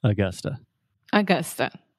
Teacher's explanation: so you have two schwa the uh uh sound